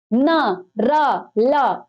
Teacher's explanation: ऊपरी मसूड़ों का प्रयोग। ना, ना, ऊपरी मसूड़े होते, जीभ उसको छूती है जाके · ना, ना, ऊपरी मसूड़े होते, जीभ उसको छूती है जाके, ना, रा। ठीक है, ल, ऊपरी मसूड़ों को छूती है जीभ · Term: वर्त